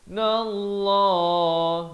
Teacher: Dengan dua harakat wajibul ghunnah. Nallah, lafz jalalah dibaca tebal dua harakat